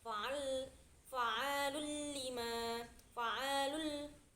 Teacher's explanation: Itu ada idgham bila gunah yang artinya cara membacanya itu ditekan.